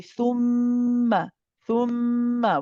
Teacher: we see the mim mushaddad. And what we do with the mim mushaddad is that we say that this has akmal ghunna. So we don't just say thumma, we say thumma, thumma.